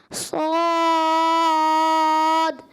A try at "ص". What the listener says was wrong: اچھا آپ نے صاد بند کر دیا. صاد کلکلا ہونا چاہیے.